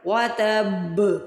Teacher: پورا زور ڈالیں گے کیونکہ اس کے اوپر شد ہے